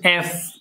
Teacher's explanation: উপরের দাঁত নিচের ঠোঁট এফ